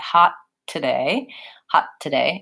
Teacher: and then I'm still making the stop T but it's linking naturally into the next word